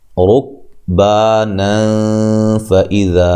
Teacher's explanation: अगर मिला के पढ़ते हैं तो यहाँ नून तनवीन का इख्फा माल गुन्ना होगा।